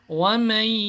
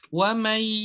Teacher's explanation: ketika kita masuk ada suara dengung, ada suara yang keluar dari hidung. Contohnya, wamai harus ada masuk ke hidung. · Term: idgham nakis